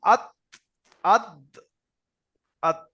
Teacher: তা দাল তার মাখরাজ হলো এই জিবের আমাদের যে আগা আছে এই জিবের আগাটা সামনের উপরের দুই দাঁতের গোড়ার সাথে গিয়ে লাগবে